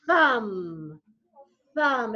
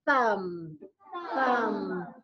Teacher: so it's not being voiced with your vocal cords but you're taking that air and you're pushing it